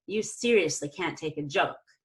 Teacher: I can go up high on seriously if I think it's a very interesting adverb